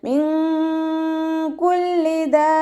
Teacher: മിൻ കുല്ലി ദാബ്ബ, നൂൻ സാക്കിനയ്ക്ക് ശേഷം ഇഖ്ഫാഇൻ്റെ ലെറ്ററായിട്ടുള്ള കാഫ് വന്നു. നൂൻ സാക്കിനയെ മറച്ചു വെച്ചിട്ട് മണിച്ചോതി കൊടുക്കുക. മിൻ കുല്ലി എന്ന് ഓതിപ്പോവരുത്.